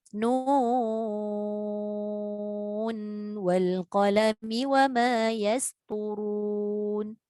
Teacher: maka dia tidak boleh dibaca dengan gunnah, tapi sebaliknya dibaca dengan izhar ataupun jelas.